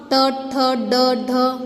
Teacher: हमारी जीभ जो है वो तालु से टकराकर दांतों को टच कर रही होती है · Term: मूर्धा